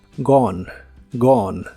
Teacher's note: La O se puede pronunciar normal o como una A profunda, que son sonidos muy similares. La E del final es muda.